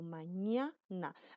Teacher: Hay una pequeña introducción de aire que casi ni se siente por las vías nasales.